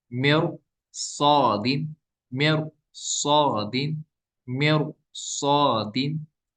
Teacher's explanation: इस तरह यहाँ भी रॉ साकिन के बाद साद आ गया, तो ये भी हुरूफ मुस्तअली में से, अगरचे इस तरह हमें रॉ साकिन को बारीक पढ़ना था, लेकिन साद हुरूफ मुस्तअली आ गया, तो इसकी वजह से हम इसको क्या पढ़ेंगे, पुर पढ़ेंगे।